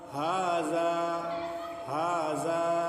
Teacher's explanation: ہا بھی کھینچیں گے اور زال بھی کھینچ کے پڑھیں گے، ہے نہیں؟ دھیان دیتے رہنا آپ لوگ، ہے نہیں؟